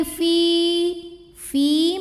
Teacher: karena ada Ya Sukun sebelumnya baris kasrah maka cara bacanya dipanjangkan Finya dua harakat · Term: Ma Thobi'i